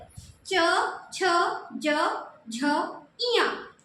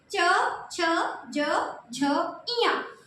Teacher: आपकी जीभ बार बार तालू पे टच हो रही है